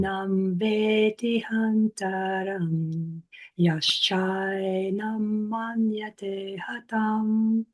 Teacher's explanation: So you gave the full length to the A, but you shortened that T a bit. If you tried to chant it holding that full double T, it would have kind of spoiled your rhythm a little bit, stuck in a matra or even a half matra there.